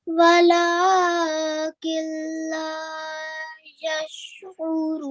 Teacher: Do not pronounce the noon sakina sound at all. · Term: assimilation without the nasal